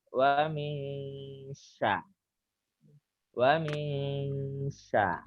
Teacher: untuk samarnya suara Nun jangan sampai muncul jelas